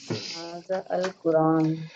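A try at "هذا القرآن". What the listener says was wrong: हादल, ऐसा कभी भी इसको हादा अल नहीं पढ़ेंगे, हादल मिक्स, तुम कंबाइन कर देते हैं ना। हादल कुरआन, ये क्या है?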